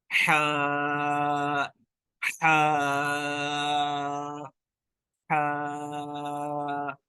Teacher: حلق جو ہے اس کے درمیان حلق سے اس کو ادا کرنا ہے، اوپر سے بھی نہیں کرنا. درمیان وسط جو حلق ہے وہاں سے ادا کرنا ہے.